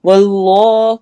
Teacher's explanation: اس میں جلالہ کو موٹا پڑھنا ہے